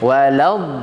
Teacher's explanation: Sehingga kesalahan yang sering terjadi yaitu di huruf dod ayat terakhir waladh. Huruf dod ini adalah termasuk huruf sisi lidah